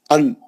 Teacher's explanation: जबान की नोक ऊपर के मसोड़ों को लगती है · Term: नून